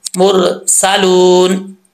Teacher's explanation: वाव से पहले हर्फ पर पेश है तो 1 अलिफ की मिकदार लंबा करेंगे